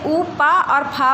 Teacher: ओठ से ऊ पा और फा बोला जाता है।